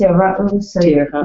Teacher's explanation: the accent's on the next to last syllable